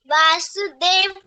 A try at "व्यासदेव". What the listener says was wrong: नहीं बेटा, देखो एक मिनट, वी ए है कि वी वाई बीच में आता है ना, तो क्या होता है? व्यासदेव, वासुदेव नहीं है, व्यासदेव, वासुदेव कृष्ण हो जाते हैं फिर, ठीक है, फिर से बोलो।